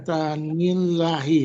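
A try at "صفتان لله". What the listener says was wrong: Nggak, bukan. Ya, coba dilihat. Tidak ada alif tuh di setelah Allah ini tidak ada alif. Berarti apa? Lillah. Lillah. Sifatani lillah. Kalau dibaca sifatanillahi, nah, itu kan berarti idofah. Kalau idofah nunnya harus hilang dong kan sifatani itu musanna.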